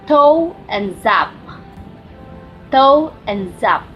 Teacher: raising the tip of the tongue towards the ridge that is right behind the upper front teeth, called alveolar ridge